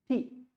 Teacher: when I say T, this tongue should touch the alveolar ridge